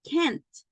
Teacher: if you say can and you do not emphasize the end it sounds like the positive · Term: T sound at the end